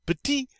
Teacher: in the masculine we don't say that final t